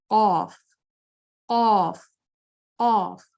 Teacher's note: پیچھے سے زبان بالکل سافٹ پیلٹ کے ساتھ ٹچ کر رہی ہے اور یہاں سے کرو کھا رہی ہے، زبان میں ہیوینس تو آ رہی ہے، آواز ہیوی آ رہی ہے لیکن اس کو ہم بالکل قید نہیں کر رہے، اس کی طرح اس سے آواز بالکل سیدھا سیدھا باہر آ رہی ہے. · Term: قاف کا حرف